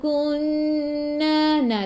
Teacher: Dua harakat. Nun ada sabdu, tekan ke dalam nun dan dengung dua harakat. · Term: Wajibul gunnah